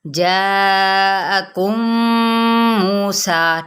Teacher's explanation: جاءکم یہاں پہ 4 حرکات کے برابر کھینچ دیں · میم کو میم کے ساتھ ملائیں، ادغام شفوی